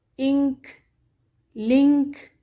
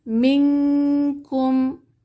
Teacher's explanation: نون کی آواز کا خیشوم میں اخفا کیا جائے گا، جیسے ہم بولتے ہیں انک، لنک۔